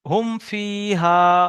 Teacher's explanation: মিমকে বিনা গুন্নায় জাহির করে পড়তে হবে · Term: ইজহারে স্বাভাবি